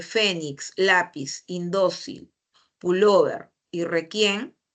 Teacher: Porque la mayor fuerza de voz está en la penúltima. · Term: graves